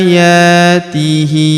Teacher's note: Huruf ya kita panjangkan dua harakat karena terdapat alif kecil di atasnya.